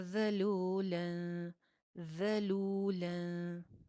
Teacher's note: जाल अगेन सीटी के बगैर, लाम के साथ वाव मद्दा और पेश होंठ गोल